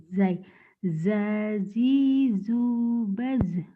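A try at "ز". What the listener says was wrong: Jangan baj, baz, baz. Jangan ada e-nya ya, hati-hati. Karena ini bukan huruf kol-kolah. Mirip jim, tapi bukan ini mah. Zai, rapuh. Zazizubaz.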